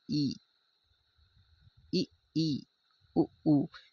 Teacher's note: इसका उच्चारण जब करते हैं तो हमारा जो मुंह होता है लगभग पूरा बंद होता है